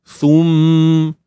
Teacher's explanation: Mim bersabdu. Kita perlu dengungkan dengan kadar sepanjang 2 harakat begitu, dan hukumnya di sini wajibul gunnah wajibul gunnah.